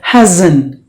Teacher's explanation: so you have to pronounce the S like the Z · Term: Z sound